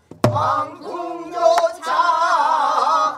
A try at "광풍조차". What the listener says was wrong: 누가 그렇게 이상한 소리 나는데 아하가. 광풍조차 하하 해야지. 아하 아하. 광풍조차 하하.